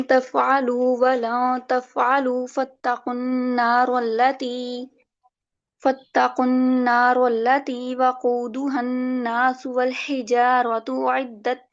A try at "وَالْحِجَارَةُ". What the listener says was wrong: نہیں، ادھر وقف کیجیے گا، ہجارہ پہ وقف کریں، کیونکہ جب آپ وقف کریں گے نا تبھی یہاں کے سائی کا خلوف ہوگا، ورنہ نہیں ہوگا۔ ٹھیک ہے، ان فتح اور ان کا امالہ تبھی ہوگا جب آپ یہاں وقف کریں گے، وقف کیے بغیر ان کی یہ وجہ نہیں ہوں گی۔ وقف کر کے۔